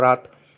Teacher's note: जैसे ही आप रात शब्द बोलोगे तो इस ता के उच्चारण में से आ की ध्वनि गायब हो गई